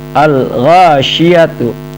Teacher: alif lam bertemu dengan ghain, al ghasyiyatu, bunyi alnya jelas, berarti hukumnya adalah alif lam koma ria.